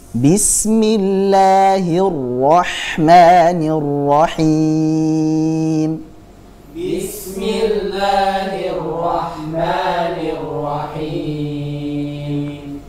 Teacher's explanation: Tapi huruf sinnya tipiskan, tajam suaranya karena memiliki sifat shafir. Jadi bis, jam bis, B-nya pun kasrohnya jelas.